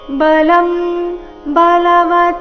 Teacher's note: ಬಲಂ ಅನುಸ್ವಾರದ ಉಚ್ಚಾರಣೆ ಇಲ್ಲಿ ಅನುನಾಸಿಕ ಮ ರೀತಿ, ಯಾಕಂದ್ರೆ ಮುಂದಿನ ಶಬ್ದ ಬದಿಂದ ಪ್ರಾರಂಭ ಆಗ್ತಾ ಇದೆ. ಪ ಫ ಬ ಭ ಈ ವರ್ಗದ ಅನುನಾಸಿಕ ಮ ಇದ್ದ ಕಾರಣ ಬಲಂ ಅಂತ ಬಂದಿದೆ.